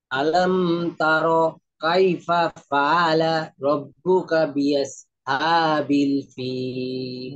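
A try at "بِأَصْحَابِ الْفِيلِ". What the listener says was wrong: বি আস, সৎটা একটু মোটা আওয়াজে হবে, বি আস হাবিল ফিল। আবার বলেন।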